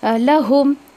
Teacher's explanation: गुन्ना बिल्कुल नहीं होना चाहिए